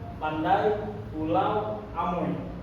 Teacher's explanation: Dan ada juga a, i, a, u, dan o, i, vokal diftong. Gabungan dua bunyi vokal yang diucapkan dalam satu suku kata secara berurutan.